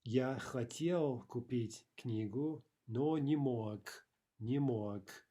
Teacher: Remember that final g is devoiced. Sounds like a ka, right?